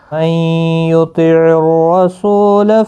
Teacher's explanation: من نون ساکن کے بعد یرملون کا یا ہے، ادغام مع الغنہ ہوگا، طا حروف مستعلیہ ہے، پر پڑھا جائے گا، را بھی پر پڑھا جائے گا زبر کی وجہ سے، سو و مدہ ہے، ایک الف کی مقدار کے برابر کھینچ کر پڑھیں گے۔